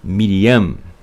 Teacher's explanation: Mas acredito que seja Miriam, com a boca fechada no final, né? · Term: men sufit